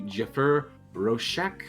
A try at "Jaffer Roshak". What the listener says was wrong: Jaffer. It's an A, not an E. that's an E. It's not an O either.